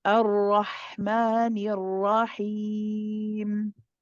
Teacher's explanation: when you say the Ra, don't circle the lips. Try to keep the lips flat because you're keeping it slightly circled and then it's impacting the ha because you keep it like that even for the ha.